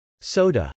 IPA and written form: sˈoʊdə (soda)